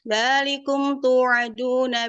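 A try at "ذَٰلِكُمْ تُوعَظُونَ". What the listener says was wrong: Ayo, azu, keluarkan ujung lidah, sofir rohwanya tampakkan biar nggak kayak kayak nggak dot, kayak huruf dot. Dzalikum tu'azu, keluarkan ujung lidahnya, makhrajnya.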